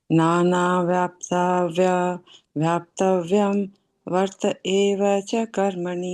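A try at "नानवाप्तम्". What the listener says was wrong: Don't combine these two together because then we get wrong. Then it becomes nana, and the nana not grandfather. Nānavāptam.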